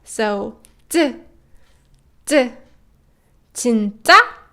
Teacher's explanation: it's a more tensed up version and high pitched version of t sound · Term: double tiut